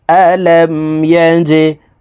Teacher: জিম কলকলার হরফ নিচের দিকে ধাবিত করে ধাক্কা দিয়ে উচ্চারণ করিয়া পড়িতে হয়